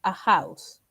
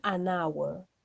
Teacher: Pero, si vamos a utilizar la palabra hour, si bien hour empieza con H, acá la H no va a sonar como J, sino va a sonar como una vocal. Por lo tanto, como suena con vocal, vamos a poner an hour. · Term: silenciosa la H